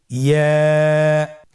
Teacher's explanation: ইয়া উচ্চারিত হয় জিহ্বার মধ্যখান তার বরাবর উপরে তালুর সঙ্গে লাগিয়ে উচ্চারিত হয়। আমরা জিহ্বার মধ্যখানটাকে উপরে তালুর সঙ্গে লাগিয়ে উচ্চারণ করি